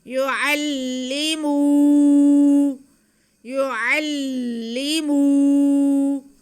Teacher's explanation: یعلی، یعلی، آگے میم پہ پیش اور واو ساکن ہے تو یہ واو مدہ ہو گیا. میم کے آواز کو ہم کھینچ لیں گے